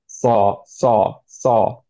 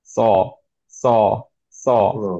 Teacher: শুধুমাত্র নিচে টাচ করতে হবে, টাঙের উপরের পার্ট কোনো জায়গায় টাচ করবে না, তালুতে অথবা উপরের দাঁতে টাচ করবে না, ওকে? সো সাউন্ডটা হবে কি, স, স, স, মাচ ক্লিয়ার একটা সাউন্ড, স, রাইট?